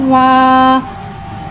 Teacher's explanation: वाव को होठों की गुलाई के साथ अदा करके पढ़ेंगे